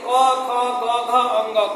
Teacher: कंठ पर हाथ रखेंगे तो आपको उसका प्रकंपन मजबूत होगा। यानी कि कंठ ही इसका उच्चारण स्थान है। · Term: कंठ वर्ण